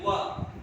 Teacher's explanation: वा में ओठ नहीं मिलते वा, तो इसका वा का केवल एक वा को बनाने के लिए अलग से सूत्र बनाना पड़ा, वकारो दंत्योष्ठ। इस वा का उच्चारण स्थान दंत और ओष्ठ है।